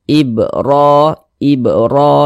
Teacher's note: fathah maka dia di baca tabkhim dibaca tebal sehingga pangkal lisan kita naik terangkat ke atas ketika Kita mengucapkannya tebalkan huruf rnya ibr ibro ditebalkan N kemudian Hi dibaca panjang